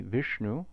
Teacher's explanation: this is a cerebral sibilant so most of us are saying vishnu incorrectly because we don't have this in english but you can hear that cerebral quality if you see it